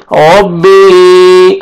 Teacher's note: ہے ملائیں گے، رب، با زیر یا جزم مد بی، ربی، یا مد ہے، اوپر مد جائز بھی ہے، 3 سے 4 الف کے برابر آپ نے کھینچنا ہے